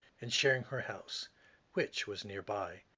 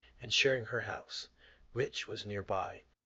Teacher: now which becomes a rising tone instead of the dropping tone in the original speech